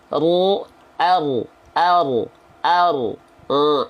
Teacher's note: Ujung lidahnya tidak menyentuh langit-langit. Ya, ru. Jadi yang nempel punggung lidahnya. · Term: huruf ro